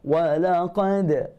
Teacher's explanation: Huruf qaf tebal. Huruf dal tak tebal.